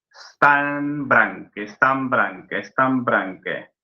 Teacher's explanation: Predomina no ese toque con los alvéolos dentales, sino los labios que se tocan.